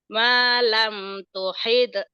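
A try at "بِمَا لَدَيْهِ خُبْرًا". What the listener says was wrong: tuhit ta. Jangan tuhid. Tuhit ta. Ta. Tuhit ta. Tuhit ta.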